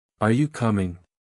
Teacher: Rising intonation for a question.